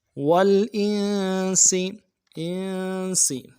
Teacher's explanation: جن والانس، واو کو لام کے ساتھ ملانا ہے، لام میں غنہ نہیں کریں گے، حمزہ کو نون کے ساتھ ملانا ہے، نون ساکن ہے، غنہ کریں گے اور سین کی سیٹی باریک ہوگی